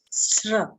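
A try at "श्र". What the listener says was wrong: Not sra, not S-R-A, S-H-R-A, shra. So to say Sri Devi, like many South Indians would say for that is, or Sri, that is wrong because it's not a S-R-A sound. It is S-H-R-A. So it should come Shra only and not Shri.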